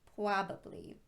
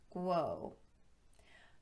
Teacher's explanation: a tendency to substitute lip movement for tongue movement on the R sound. This results in more of a w sound.